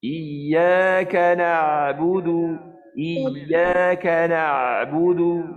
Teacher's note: Sedangkan ain adalah huruf tawassut. Jadi kita menghimpit tekak kita sebab ain ni di tengah kerongkong ya